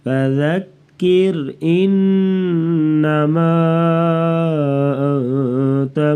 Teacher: فذکر ذال کو نرمی سے پڑھیں گے. کیر را کو باریک پڑھیں گے